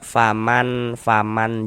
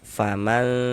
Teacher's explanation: karena dia didengungkan, sehingganya di bagian man itu suaranya tuh kita tahan. Kita panjang sejenak, kita gunakan, kita dengungkan.